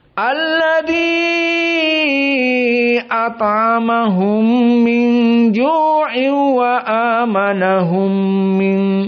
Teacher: min ju'in wa a dalam keadaan idgham bila gunnah